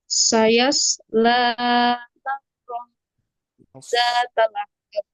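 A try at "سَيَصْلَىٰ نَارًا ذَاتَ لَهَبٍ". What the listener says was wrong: Sodnya tebal ya. Sayas diangkat lidahnya. Sayasla naron zata lahab.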